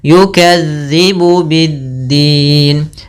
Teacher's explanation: Ya, kemudian berlafal dzal lagi, hati-hati jangan sampai yukadzibu biddin. Dia dzal, ujung lidah nempel dengan gigi seri atas.